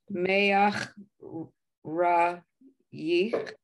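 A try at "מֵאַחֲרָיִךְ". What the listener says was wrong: The third letter is a chet. Me-a-cha-ra-yich.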